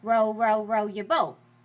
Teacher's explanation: You just say, "Oh, my voice wants to go up, down, up, down, like row, row, row your boat." You know that you want to go down, down, down, up, down.